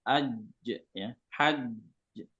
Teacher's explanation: Tidak bisa dipanjangkan ya, tidak bisa dialirkan karena dia menutup makhrajnya. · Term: syiddah